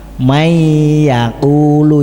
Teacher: Kalau idgham bi gunnah itu nun mati ketemu ya, contohnya may yaqulu itu kan harus panjang, dibaca dengung, itu idgham bi gunnah. Syaratnya harus tidak tunggal kalimah.